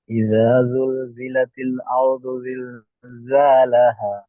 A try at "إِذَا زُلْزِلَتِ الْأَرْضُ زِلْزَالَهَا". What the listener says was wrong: যা আছে জালের উচ্চারণটা আপনার খুব সুন্দর হচ্ছে, কিন্তু জার যে উচ্চারণটা, যা, এটা একটু ভালো করে করেন। ইদা জুল জিলাতিল আরদু জিলজালাহা, চারটে যা, এখানে দুটো যা এখানে দুটো যা, এই যার উচ্চারণটা ঠিক করে করেন। ইদা জুল জিলাতিল আরদু জিলজালাহা।